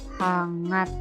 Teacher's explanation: Diucapkannya bisa N, bisa juga eng di situ. Jadi ada bunyi N dan bunyi eng.